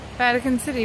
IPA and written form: ˈvætᵻkən ˈsɪti (Vatican City)